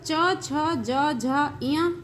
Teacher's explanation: ये 5 व्यंजन तालु से बोले जाने वाले हैं, इसलिए इन्हें तालव्य वर्ण भी कहते हैं।